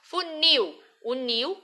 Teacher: é um terminado enlil e ea palavra for oxítona ou seja a última sílaba da palavra é mais forte a sílaba tônica